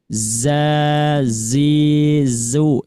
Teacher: Di awalnya diberikan aliran, Bu. Za. Jadi jangan ja langsung, tapi diberikan dulu aliran.